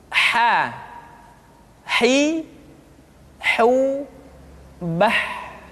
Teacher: Huruf ha dikeluarkan dari tengah-tengah tenggorokan. Tengah-tengah tenggorokan.